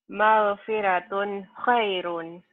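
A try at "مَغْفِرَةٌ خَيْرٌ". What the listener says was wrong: Magfiro. Ro ya, tafhim tebel. Jangan magfiratun.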